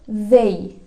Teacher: Kayak zal, jadi dibaca the. Jadi ujung lidahnya agak digigit terus dikasih hembusan, ada getarannya juga dalam tenggorokan. The. Contoh kata dalam bahasa Inggrisnya ada they.